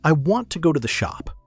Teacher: The two and the the nearly disappear. The want and shop get the energy.